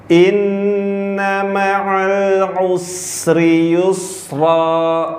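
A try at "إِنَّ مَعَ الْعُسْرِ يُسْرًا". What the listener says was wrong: Oke, bagus.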